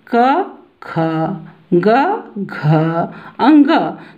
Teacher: पहला, तीसरा और पांचवें वर्ण में कम वायु निकल रही है, लेकिन दूसरे और चौथे वर्ण में अधिक वायु निकल रही है। तो वर्गीय वर्ण का दूसरा और चौथा वर्ण महाप्राण होता है।